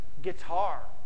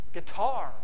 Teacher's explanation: The accent's kind of weird. It's on the second syllable.